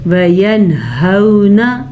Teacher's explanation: نون ساکن کے بعد ہا ہے جو کہ حروف حلقی میں سے ہے تو نون ساکن کو ہم ظاہر کر کے پڑھیں گے، بغیر غننے کے پڑھیں گے.